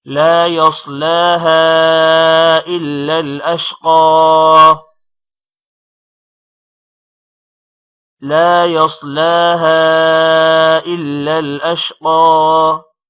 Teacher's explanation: لا يصلاها، لا کو تھوڑا لمبا کریں گے. يصلاها صاد موٹا ہوگا اور لام پر کھڑی زبر ہے، تھوڑا لمبا ہوگا. يصلاها الف پر مد ہے جس کی وجہ سے ہا کو تھوڑا لمبا کریں گے.